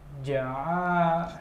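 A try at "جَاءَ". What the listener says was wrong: ja-nya panjang, pelan.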